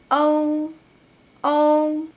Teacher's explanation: So “ou” is “o” plus “u”, “ou”, “ou”.